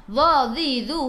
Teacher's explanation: hujung lidah keluar sikit sahaja pada gigi depan